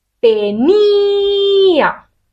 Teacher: cuál es la parte de la palabra que recibe la fuerza la recibe la i. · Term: sílaba tónica